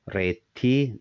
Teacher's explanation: the T part is strong and also long. The re is just the long sound